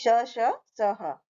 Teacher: उष्म व्यंजन होते हैं उष्म का मतलब होता है गर्म तो जिन व्यंजन के बोलने के समय वायु रगड़ खा कर के निकलती है उन्हें उष्म व्यंजन बोलते हैं